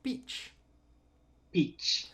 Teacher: this sound you're pronouncing this kind of like with a it's it's an affricate sound which means you're going to have kind of a t attached